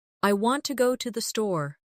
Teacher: The stress is on want and store. The words to and the are much softer.